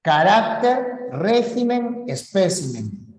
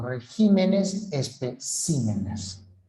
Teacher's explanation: Solamente son estas palabras, son casos de palabras en los que cambia la posición del acento, nada más. Cambio de la posición del acento o cambio de la sílaba tónica cuando pluralizan